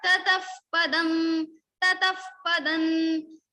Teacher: So tataha visarga is followed by pa, so we will say tataf. Fa sound will come in the place of visarga. · If next syllable is pa or pha after the visarga, then we will put phakar or upadmani, that is pha sound. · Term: upadmaniya